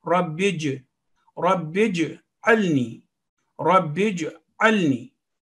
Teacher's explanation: stress on ba because of its tashdeed, and jeem with slight jerking sound. Ayn is different from alif, so alni, alni, not alni.